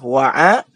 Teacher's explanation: a itu ain keluar dari tengah-tengah tenggorokan.